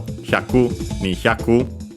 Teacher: most are accented actually, luckily, and also luckily, on the ku, just like hyaku on its own